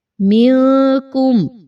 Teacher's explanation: نون ساکن کے بعد کاف، تو یہاں پر اخفا کا قاعدہ، نون کی آواز کو کلیئر نہیں پڑھ رہے ہم